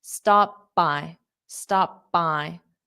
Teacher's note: So I put my mouth in the P position, stop. And then when I open it, I say the word by.